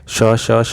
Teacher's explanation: श और ह व्यंजन कैसे हैं तो ये संघर्षी व्यंजन है